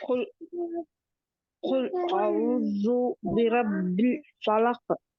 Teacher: काफ मोटा है, पहला और आखिरी काफ, ये दोनों मोटे हैं।